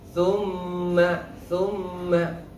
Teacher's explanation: Kita bisa merasakan bunyi dengung keluar dari pangkal hidung.